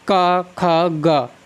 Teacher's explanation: का और खा की अपेक्षा गा में अधिक कंपन होता है · जब हम गा का उच्चारण करते हैं तो आवाज़ थोड़ी भारी हो जाती है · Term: सघोष